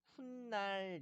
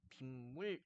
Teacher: 앞말의 받침이 니은이 덧나는 겁니다.